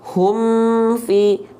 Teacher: sifatnya bukan syiddah bukan tertahan tapi masih sedikit mengalir suara maka ketika dilafalkan ya alirkan sedikit bunyi m-nya tapi ketika dialirkan jangan disertai dengan pantulan ya alladzi Hum Fi Nah jadi Hum Fi ngalir sedikit Hum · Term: huruf mim